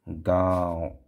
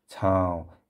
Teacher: अनुनासिक तो क्या था बच्चों? अनुनासिक भी नाक से निकलता है। साथ में मुंह से निकलता है इसकी ध्वनि।